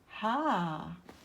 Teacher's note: And ha comes from the throat, from the lower throat.